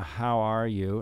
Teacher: he likes to put the the stress on the second syllable